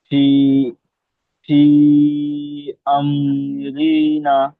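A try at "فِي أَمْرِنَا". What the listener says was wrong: ফি আমরি, র টান হয়ে গেল, র টান হবে না, নুন আলিফ মাদ্দা টান হবে।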